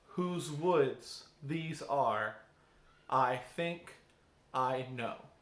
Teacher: Whose woods these are, I think I know. And those patterns of 2 syllables, one stressed, one unstressed syllable, are called an iamb.